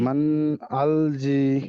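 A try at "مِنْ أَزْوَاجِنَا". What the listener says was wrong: এখানে জালটার জায়গায় গিয়ে কেমন যেন একটা হয়ে যাচ্ছে। আজি না, আজি না। হ্যাঁ, এখানে জালটা হালকা করতে হবে। মান আজি না, আজি না। নুন সাকিনের পরে হুরুফে হালকির বলেন।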